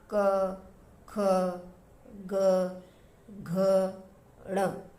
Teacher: इनको बोलते हुए कंपन होता है गले में, तो आपको पता चल जाता है कि ये कंठ से उच्चारण होता है इनका। और जो ये इसका क वर्ग का लास्ट वर्ण जो है इसका उच्चारण कंठ के साथ साथ नासिका भी होता है।